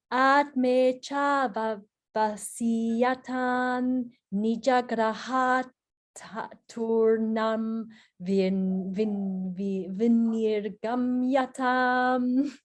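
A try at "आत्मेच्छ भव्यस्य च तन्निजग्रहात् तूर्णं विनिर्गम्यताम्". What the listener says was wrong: Good.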